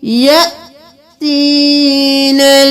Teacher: یا حمزہ کے اوپر جزم ہے تو ہم جھٹکا دے کر پڑھیں گے